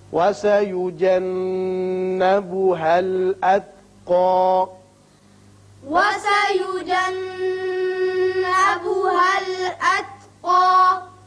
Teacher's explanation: نون مشدد ہے، غنہ کریں گے.